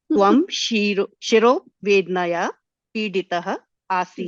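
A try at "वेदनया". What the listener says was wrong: Vedanaya. You're pronouncing it like how you would pronounce Hindi. So, akara. because if you say Vednaya, it will become a Sanyukta Akshara.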